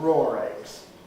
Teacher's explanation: we also have noticed the interesting phenomenon of intrusive r where if the eggs were raw uncooked we might call them